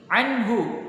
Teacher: nun sukun bertemu dengan ha, di sana termasuk hukum bacaan idhar yang kita membacanya jelas